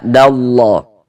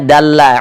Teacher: huruf lam jalalahnya dibaca tebal. Dibaca tabkhim. Nah, sehingga kita baca dallah.